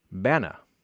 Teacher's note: haplology, or as I called it, haplogy, where a repeated syllable is deleted